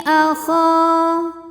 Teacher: Cara bacanya kha dipanjangkan 2 harokat. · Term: mad tabi'i zahiri